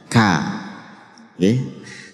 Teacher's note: Jadi memang ketika disukun dia itu cenderung lebih tampak hamesnya. Kak. Ini biasanya ya memang kalau disukun tampak lebih kuat, hamesnya lebih kuat.